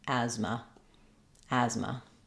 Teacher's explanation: stretch on as and then short on Ma · In addition to being short, the second syllable has the letter A is an unstressed vowel schwa, which sounds like a. So stretch on as and then short on M.